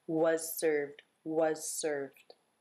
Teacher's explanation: You might actually hear the Z here simply as the S because it's followed by an S, so the Z might just get dropped.